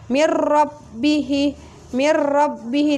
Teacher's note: maka dimasukkannya tidak boleh dengan dengung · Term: idgham bilagunnah